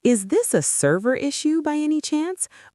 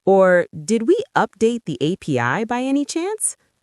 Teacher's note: The rising intonation at the end shows you're asking to confirm information.